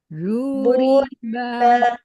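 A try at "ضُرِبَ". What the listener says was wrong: Jangan ngambang, lidahnya menempel ke geraham ke lidahnya.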